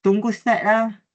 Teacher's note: Lenggok sebutan la mengalami kenaikan lembut di hujung untuk menunjukkan sebarang penegasan bagi ayat tersebut.